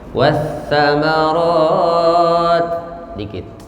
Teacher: ta ada hamasnya sedikit tapi jangan berlebihan